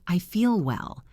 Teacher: Use the dark L on feel and well.